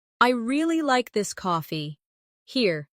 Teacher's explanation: Really is the emphasis.